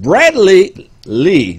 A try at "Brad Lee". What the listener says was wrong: It's not one word. It's not Bradley. It's Brad Lee.